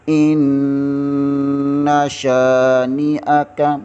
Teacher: شین زبر کے آگے الف مدہ ہے، اسے تھوڑا سا کھینچیں گے۔